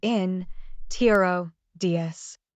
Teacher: the word introduce is pronounced with a stress at the end